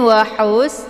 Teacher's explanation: zahiri kemudian wahus di sini ada ha yaitu ha kecil ya dia keluarnya dari tenggorokan bagian tengah ada desis anginnya